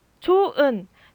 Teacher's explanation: 좋은이 좋은으로 발음되면 뭐가 없어지죠 네 히읗이 없어지죠 이렇게 있던 음소가 없어지는 것을 탈락이라고 합니다 쉽죠 말 그대로 히읗